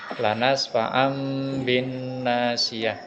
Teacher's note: Lanas fa'am bin nasiyah terdapat tanwin bertemu dengan ba, sehingga cara membacanya adalah dengan menautkan kedua bibir atau disebut juga dengan iklab